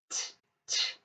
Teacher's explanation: When I felt my throat, there was just air coming through, no vibration. So it's unvoiced. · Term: unvoiced sound